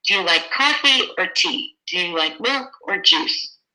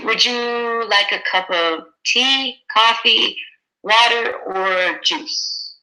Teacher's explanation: Okay, so we have rising, rising, falling. Rising, rising, rising, falling.